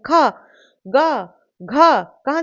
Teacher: गले से आ रही है ना? कंठ से आ रही है।